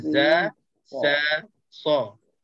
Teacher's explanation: Huruf zai, huruf sin, sad, ketiga-tiga huruf ni keluarnya dari hujung lidah menekan belakang gigi bawah.